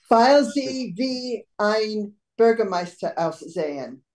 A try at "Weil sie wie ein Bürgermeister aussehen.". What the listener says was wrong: Sehr gut.